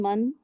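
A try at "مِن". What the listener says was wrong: मन नहीं है, ये थोड़ा सा आप गड़बड़ कर रहे हो, मिन है।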